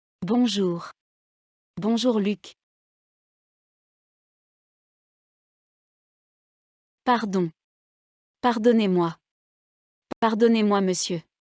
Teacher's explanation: l'accent tonique se déplace à la fin du groupe rythmique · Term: le déplacement de l'accent tonique